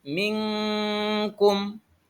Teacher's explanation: penerapan hukum nun sukun dan tanwin Ini contohnya adalah ikhfa misalkan nun mati bertemu dengan huruf k maka kita harus baca samar-samar dan dengung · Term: ikfa